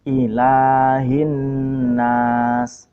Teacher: Di sini sering terjadi kesalahan dengan mentasdid lam, padahal lam tidak bertasdid.